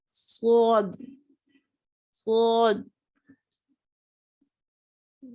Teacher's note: یہ صاد موٹا حرف ہے اور سیٹی جیسی آواز آئے گی